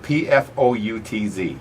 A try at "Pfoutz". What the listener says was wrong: The P is silent.